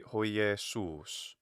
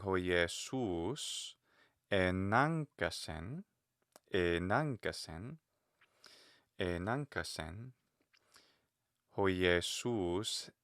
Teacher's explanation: But I'm saying hoi Jesus enankasen, hoi Jesus, because it's my sentence isn't over, my phrase isn't over, so I'm allowing the pitch to kind of keep climbing up a little bit there